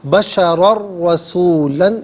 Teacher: بشرن میں را پر 2 زبر کی تنوین، اسے رسولہ کی را کے ساتھ ملائیں گے، یہاں یرملون کا قاعدہ اپلائی ہوگا اور را کی آواز کو ادا کیا جائے گا۔